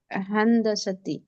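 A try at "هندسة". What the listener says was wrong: हाँ, हन ही इधर आता है ना, हन हंदसा।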